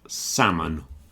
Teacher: And salmon, the fish salmon, also has a silent L